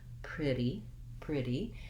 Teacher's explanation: we have first syllable stress so the pre syllable is long and the d syllable is short and unstressed pretty pretty and